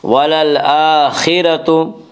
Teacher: وللآخرة خا کو پر پڑھیں گے، خا حروف مستعلیہ میں سے ہے، حروف مستعلیہ 7 ہیں جن کا مجموعہ خصہ ضغط قج ہے جو ہمیشہ ہر حال میں پر پڑھے جاتے ہیں۔ وللآخرة را کو پر پڑھیں گے، اس کا قاعدہ کہ را کے اوپر زبر پیش ہے تو را کو پر پڑھا جائے گا، را کے نیچے زیر ہے تو را کو باریک پڑھا جائے گا، یہاں را کے اوپر زبر اس سے را کو پر پڑھیں گے۔